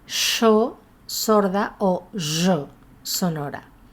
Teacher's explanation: El yeísmo con reilamiento, es decir, la pronunciación de nuestros dos fonemas palatales con un sonido similar al sonido sh o sonoro z. Es la realización especialmente típica de Buenos Aires.